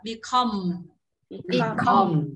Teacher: Rồi, đọc mạnh vào sau ạ.